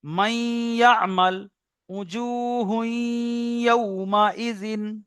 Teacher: নুন সাকিনের পরে ইউমিনের চারটি অক্ষরের মধ্যে থেকে ইয়া এসছে, তাই মিলিয়ে একালি পরিমাণ গুণনা করে পড়তে হবে।